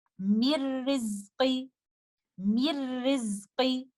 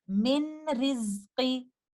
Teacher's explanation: If it comes after nun sakina, we do idgham of nun sakina and completely merge it into letter ra. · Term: idgham kamil